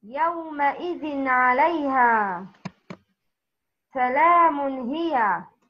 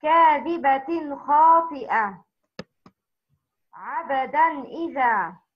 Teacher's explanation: If a noon ساكن or a تنوين is followed by any of the six throw letters, the noon ساكن or the تنوين is pronounced clearly from its respective origination without غنة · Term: إظهار حلقي